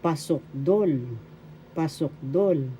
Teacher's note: The accent is in the third syllable